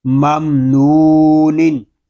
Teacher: آگے میم ساکن کے بعد حرف با اور میم کے علاوہ نون آ رہا ہے تو یہاں اظہار شفوی ہوگا، یعنی غنہ نہیں کریں گے